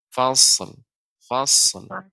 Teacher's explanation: shad bukan huruf qalqalah sehingga tidak boleh langsung dipantulkan sebagaimana dal atau jim